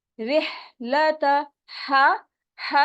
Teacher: हा की आवाज हलक के दरमियान से अदा होती है, और ऐसे होती है कि जैसे आपके हाथ को टकराए हवा